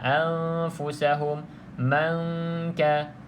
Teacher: Tapi kalau dekat sini selepas nun kosong huruf fa. Di sini selepas huruf nun huruf kaf. Maka kedua-duanya boleh kita dengung. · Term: ikhfa hakiki